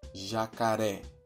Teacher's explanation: No caso da palavra jacaré, vemos que a última sílaba possui um acento e, por isso, ganha um destaque sonoro em relação às anteriores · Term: sílaba tônica